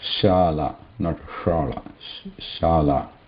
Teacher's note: Aushadha, pashana. We have shala, which is a simple sha. This is talavya, talu.